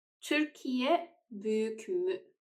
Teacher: Büyük has ü as the final vowel in it, and it is a round vowel